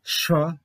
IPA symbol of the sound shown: ʃ